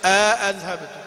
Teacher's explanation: وزاد هشام كذلك التحقيق مع الإدخال